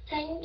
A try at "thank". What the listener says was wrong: là cái giọng anh đọc thành chữ think. Actually là thank you.